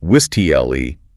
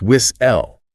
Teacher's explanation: So if you look at a word like whistle, the literal instrument a referee blows during a match, the T is sitting right there near the end. But the pronunciation isn't WIS-TLE, it's WIS-L.